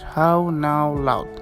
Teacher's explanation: begins with a low rather back and rounded quality